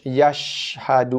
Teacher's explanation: Tengah lidah menghampiri tengah langit bunyi shh. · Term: sifat tafashi